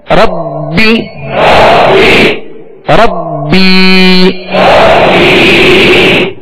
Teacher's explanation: एक अलिफ की मिकदार में खींच कर अदा करेंगे